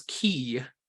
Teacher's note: when you pronounce Ki you kind of add just a little bit of a yeah at the end of it